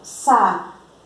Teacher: a sílaba tônica de sapato é o pá